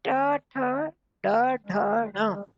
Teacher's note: मूर्धा जो ऊपर पीछे, तालु से भी पीछे की जो जगह होती है उसको मूर्धा बोलते हैं।